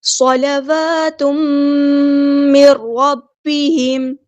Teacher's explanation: صلوات من ربہم، یہاں پہ دیکھیں صاد ہمارا ہیوی لیٹر ہے، پورا ادا کریں گے، لام باریک لائٹ لیٹر ہے، واو پر حرکات مد آئی ہے تو ایک الف کے برابر لمبا کریں گے۔ تنوین کے بعد میم آیا ہے، یہاں پہ ہو رہا ہے ادغام مع الغنہ